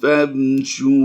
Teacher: वाव मद्दा की वजह से हम इसे लंबा कर रहे हैं